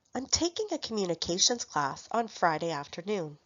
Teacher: The content words are stressed. Taking is a main verb. Communications and class are nouns. And Friday afternoon can be considered a noun or adverb.